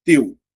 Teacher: Teu é uma sílaba só. Porque eu só tenho uma vogal. Ó. A letra U é uma semivogal.